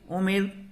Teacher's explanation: حمزہ پیش او، میم را زیر مر امر، یہاں را کو باریک پڑھیں گے، وہ اس لیے کہ رائے ساکنہ سے پہلے میم کے نیچے زیر آ رہا ہے